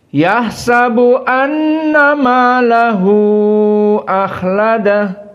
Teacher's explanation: Difathahkan sin dan maahu akhladah. Dibaca dalam keadaan tawasut arba harakat. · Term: tawassut 4 harokat